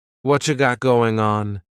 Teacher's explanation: Whatcha is what plus you becomes cha.